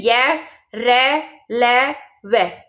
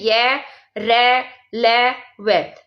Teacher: जो पूर्णतः स्पर्श नहीं होते, लेकिन इसमें जीभ, तालु और होठों को परस्पर सट्टाने से उच्चारण होता है, लेकिन स्पर्श पूर्णतः स्पर्श नहीं होंगे। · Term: अंत्यस्थ व्यंजन